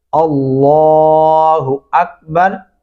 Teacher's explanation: موٹا پڑھیں گے لام، اللہ اکبر